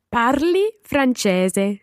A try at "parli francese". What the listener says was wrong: Bene. Parli francese.